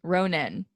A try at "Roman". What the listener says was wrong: No, Roman with an M, like romance.